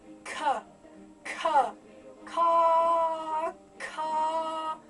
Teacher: the ka sound is on the soft palate. So rather than being there, it's sort of inside at the back here somewhere.